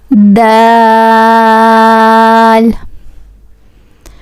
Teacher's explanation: the tip of the tongue touching the gums of the upper two front teeth and also we stood this D for 5 seconds like d